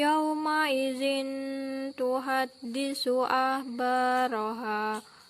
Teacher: tanwin bertemu dengan huruf Ta Maka dibaca mendengung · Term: ikhfa hakiki